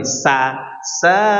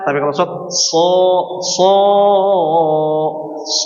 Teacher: mendatarkan pada huruf sa dan meninggikan suaranya pada huruf shad